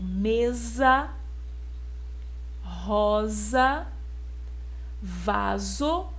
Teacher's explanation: Todas elas são escritas com S, estão no início de uma sílaba, mas tem o som de Z.